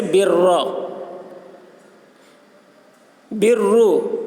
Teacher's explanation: برا کے را کو پر پڑھیں گے اور برو کی را کو بھی پر پڑھیں گے